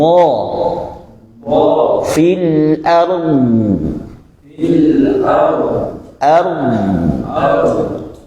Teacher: suara pada huruf Dad itu sedikit lebih lama keluar dibandingkan dengan huruf selainnya